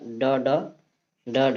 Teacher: ड ढ हमारा मूर्धन्य व्यंजन कहलाता है।